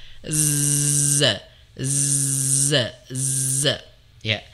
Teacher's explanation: Dia makhrajnya tidak tertutup rapat ya. Kalau tertutup rapat nanti jadi ja begitu. Ej harusnya kan enggak begitu tapi dia z ya. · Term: huruf Z, huruf zai